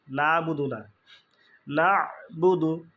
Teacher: হয় সেখানে তাহলে আমরা এভাবে পড়বো ইয়া কাফ জবর কা নুন নুনের পরে আইনের যজম তাহলে নুন গিয়ে আইন কে ধরবে